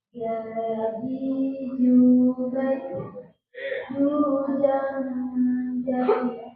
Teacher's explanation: Lanjut, huruf selanjutnya jim. Jim itu dari tengah lidah. Tengah lidah, itu langit-langit.